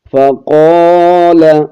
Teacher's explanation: قوف کو موٹا پڑھیں گے، الف کو ایک الف کی مقداری کھینچیں گے